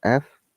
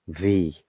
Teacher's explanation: the voiced v sound so f v they're almost same but be careful f is unvoiced while letter v is voiced · F is unvoiced, while letter V is voiced. And to create the letter F sound, the jaw is held nearly closed.